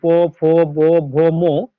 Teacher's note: উপরের ঠোট এবং নিচের ঠোট একটা ব্যবহার হচ্ছে। এজন্য এলোকে অষ্ট বর্ণ বলা হয়।